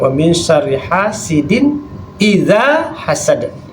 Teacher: jelaskan bunyi tanwinnya ya. gak boleh dengungkan ya. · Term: izhar